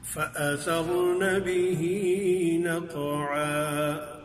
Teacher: را ساکن ما قبل مفتوح اس سے پہلے والے حرف پر زبر ہے، اس اعتبار سے دیکھتے ہوئے اس کو پر کر کے پڑھیں گے۔